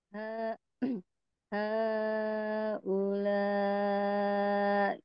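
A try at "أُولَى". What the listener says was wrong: Kurang sedikit lagi Bu. Kurang panjang karena 5 harokat masuknya. wakof ya, kalau wakof jadi nambah 1 ketukan.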